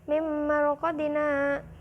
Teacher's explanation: Ro-nya itu ro tafhim maka dibaca tebal. Mim marqadina, hada itu ada saktah.